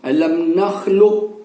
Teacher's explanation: bunyi asli daripada huruf qaf ini tetap kita bunyikan di dalam rongga mulut kita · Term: isti'la